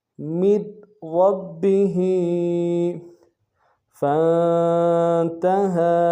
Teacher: فا کو نون ساکن کے ساتھ ملانا ہے، نون ساکن غنہ کریں گے، ہا کے اوپر کھڑا زبر ہے، 1 الف دار میں کھینچیں گے.